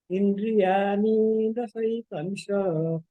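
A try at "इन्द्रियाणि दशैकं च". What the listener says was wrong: इंद्रियाणि, इंद्रियाणि पे ज्यादा देर नहीं रुकना है। इण पे इंद्रियाणि दशैकं च।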